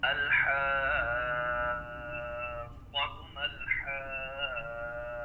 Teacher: حرف مدہ کے بعد اگر تشدید آ جاتی ہے تو طول کی مقدار میں مد ہوگی جو کہ 5 سے 6 الف ہے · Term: مد لازم کلمی مثقل